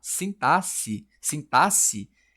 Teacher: Sintasse é o jeito de certo de dizer. O X aqui ele não tem som de KS